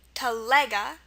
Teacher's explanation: the stress is on the lega part, telega, or teljega.